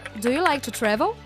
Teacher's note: Quando a pergunta busca só uma resposta afirmativa ou negativa, a voz deve ser mais forte, subir, no final da frase